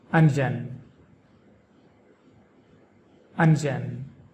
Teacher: The emphasis is on the first syllable un.